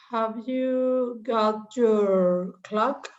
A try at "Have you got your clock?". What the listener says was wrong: Very good.